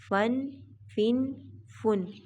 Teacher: فا کو نرمی سے پڑھا جائے گا، اس کو نہ تو موٹا کریں گے اور نہ ہی زیادہ باریک کریں گے